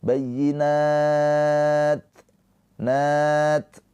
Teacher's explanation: ada sifat hames, ada aliran nafas ya percikan nafas